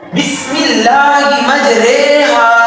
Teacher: یہ یاد رکھ لیجئے کہ سورہ ہود کی یہ آیت بسم اللہ مجریہا ومرساہا ان ربی لغفور رحیم، اس آیت پہ جب آپ پہنچیں گے تو یہاں امالہ کریں گے، یعنی اس را کو باریک کر کے یا کی طرف، بڑی یا کی طرف جھکا کر پڑھیں گے